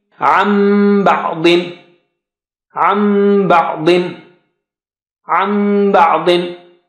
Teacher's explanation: But you have noon sakina at the end of the first word, and ba starting in the next word. So when you merge them, you replace noon sakina with meem. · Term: iqlab